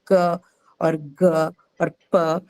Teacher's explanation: when I say k or g or p, that the last sound that you hear is what is called a shwa. So it's mostly an inbuilt vowel that comes along with most of the consonants, and it is unstressed.